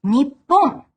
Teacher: The pronunciation is, again, basically the same, nichi, except with the vowel dropped from the second syllable. So it became Nippon.